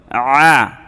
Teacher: গলার মাঝখান থেকে একটু চাপ দিয়ে